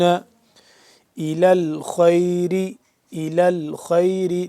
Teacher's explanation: اب دیکھ رہے ہیں یا نہیں پڑھا جا رہا، آگے حمزہ ہے، الف ہے، نہیں پڑھا جا رہا، یہ لام ڈائریکٹ لام کے ساتھ مل رہا ہے، یہ یا پڑھنے میں نہیں آ رہا